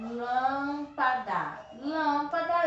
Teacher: três sílabas e eu posso classificar ela faz pela a tônica não é a última não é a penúltima é a antepenúltima então é proparoxítona